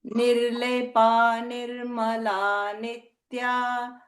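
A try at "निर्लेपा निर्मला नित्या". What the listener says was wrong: So here, nirlepa, it's a dirgha, okay? Nirlepa nirmala nitya.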